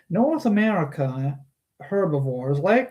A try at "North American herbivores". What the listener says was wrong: North American herbivores. You said North America herbivores. You forgot the N.